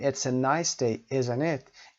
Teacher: the tag question is set with falling intonation for example The Voice goes down or that is the voice goes down it's a nice day